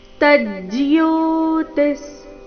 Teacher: ಜ್ಯೋತಿ ವಿಸರ್ಗದ ಉಚ್ಚಾರಣೆ ಅರ್ಧ ಸ ರೀತಿ